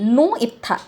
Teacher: ऊ के बाद तुरंत ई नहीं बोल देते हैं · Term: विवृत्ति